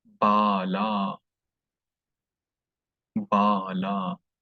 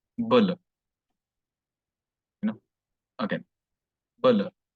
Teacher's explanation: So the long vowel is taking more time, you know, it's practical double the time of that, which we take in pronouncing the short vowel.